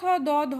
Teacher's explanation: উচ্চারিত হওয়ার সময় আমাদের জীব দাঁতে থাকে তাই এগুলিকে দন্ত বর্ণ বলা হয়